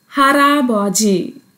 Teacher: Riul in the bachim position will mix with the next block iung and becomes ra. Instead of la, it became ra.